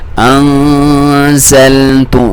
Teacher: نون ساکن یہاں پہ ہے اور اس سے پہلے اس کے بعد کوئی حروف ہلکی نہیں ہے, تو ہم یہاں پہ اخفا کریں گے. انزلت, ناک میں سے آواز اور اس کی لمبائی بھی ایک الف کے برابر